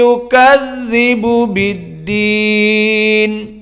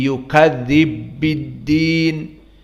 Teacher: pertemuan antara ba ad-dhammah dengan ba al-kasrah dibaca dengan idhar · Adapun qiraah yang lain dari riwayat As-Susi an Abi Amr, maka dibaca dengan idgham al-kabir, karena manhaj dari As-Susi an Abi Amr, idgham itu bisa berharokat dan penyebabnya banyak. Di sini idgham dilihatnya mutamatsilain, dari huruf ba dengan ba